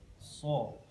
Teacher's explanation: Cara pengucapan huruf so itu tempat keluarnya ada di ujung lidah. Ujung lidah bertemu dengan dinding gigi seri bawah. So. Kemudian lidah tengah agak terangkat ya, agak terangkat.